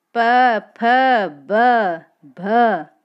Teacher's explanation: स्पर्श तो है ही और ओष्ठ भी है क्योंकि बोलते समय दोनों होठ आपस में मिलते हैं